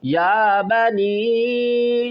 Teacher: یا بنی چھوٹی مد ہے کھینچ کر پڑھیں گے